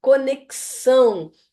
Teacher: esse X tem som de KS. Ele tem um som a mais do que eu estou vendo ali.